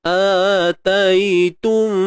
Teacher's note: Kita sempurnakan bunyi dengung tu betul-betul sampai pangkal hidung ni. Kalau tak sempurna, ataitum, bunyi dia tergantung. Dengung masih ada.